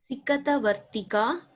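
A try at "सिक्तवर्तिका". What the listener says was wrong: Not Sikata. It's a conjunct letter.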